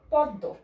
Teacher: দয়ের নিচে ম, কিন্তু দ দুইবার উচ্চারণ হচ্ছে। দয়ের নিচে ম ফলা থাকলে দকে দুইবার উচ্চারণ করা হয়